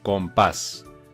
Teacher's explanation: pas es la sílaba tónica está en último lugar es aguda y además cómo acaban s le ponemos tilde en la estas